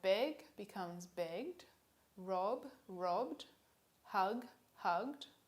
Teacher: If the suffix comes after a voiced consonant, you get d, which is voiced.